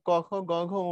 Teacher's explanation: ক খ গ ঘ ঙ এগুলো সবগুলোর উচ্চারণ কণ্ঠের মূলে। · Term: ক বর্গীয়